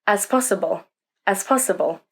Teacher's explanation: Can you hear they blend together like one word? That sp sound is key.